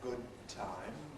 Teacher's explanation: That's a long alveolar articulation, extra long hold again, only one approach, only one release. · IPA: [ˈgʊd̚ ˈtaɪm]